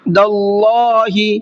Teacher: تھوڑا سا آواز کو ناک میں چھپا کر کے پڑھیں گے، اس طریقے سے۔ داللہ، اللہ کے لام کو منہ بھر کے پڑھیں گے، اس لیے کہ اللہ کے لام سے پہلے دال کے اوپر زبر ہے